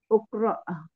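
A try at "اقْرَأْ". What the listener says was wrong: Iqra. Iqra. itu bukan U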